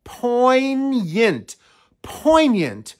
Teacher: it has two syllables the stress is on that first syllable · you see that G get rid of it and there's a hidden y right after the n